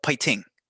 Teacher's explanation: it's like a in between a p and an f